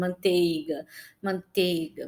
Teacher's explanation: O I, às vezes, ele é tão menor que em algumas palavras ele tende a sumir